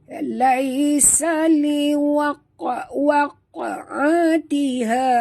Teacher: huruf qaf mati di tengah kalimah, kita kena lantunkan dia qalqalah sughra